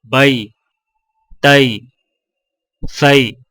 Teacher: یا لین کو یا مدہ کی طرح کھینچ کر نہیں پڑھا جاتا، بلکہ ہونٹوں کو اوپر کی طرف کھولنے کے فوراً بعد نیچے کی طرف جھکا کر نرمی سے بغیر کھینچے پڑھیں۔ · حرف لین کی ادائیگی نرم اور لچکدار ہوتی ہے، جس میں معمولی سا کھچاؤ ہوتا ہے، لیکن حرف مدہ کی طرح آواز ڈھیلی اور لمبی نہیں ہوتی